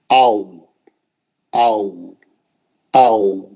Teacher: वाव में होठ नहीं मिलते, क्योंकि बीच में गोल हमको वो रखना है, सुराख रखना है और मुंह से दूर लेके जाना है